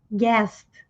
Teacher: Guest, sem pronunciar o U.